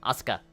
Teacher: When it comes to more Western people, they tend to put a lot of emphasis on the middle syllable rather than the Japanese way where it doesn't technically have any kind of like accentuation. They just kind of say it all, you know, monotone.